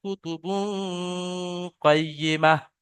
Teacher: সা, ঠিক আছে, মাশাআল্লাহ, জি, ঠিক আছে, আপনি ধরতে পেরেছেন, কফ কায়দা কফ ইকফা আছে। বুঝতে পেরেছেন যে এখানে কফ এসেছে, তাই এই তানবিনকে গুণনা করতে হবে